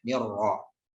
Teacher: Kemudian posisi ro-nya dibaca dengan tafkhim atau tebal ya